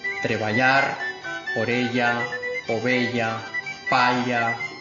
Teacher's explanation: palatal lateral elle procedente de los distintos grupos de consonante